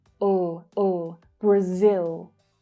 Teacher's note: But the stressed sound is on the second syllable. Brazil, Brazil.